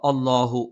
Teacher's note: ലാം അള്ളാ എന്നുള്ള ഉച്ചാരണം വരുന്ന സമയത്ത് മാത്രമാണ് ലാമിന് ഈ ഒരു തഫ്ഹീം